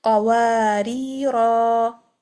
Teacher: So we'll stretch it for 2 harakat when stopping.